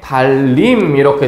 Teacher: 리을과 니은이 만나서 니은이 리을로, 그러니까 완전히 똑같은 게 돼버렸죠. 그래서 이런 것들을 완전동화라고 하는 거예요.